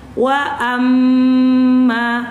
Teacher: Otomatis ketika ibu baca nun atau mim yang di atasnya ada tanda tasydid, otomatis nun dan mim itu suaranya akan masuk ke batang hidung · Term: khoisyumiyah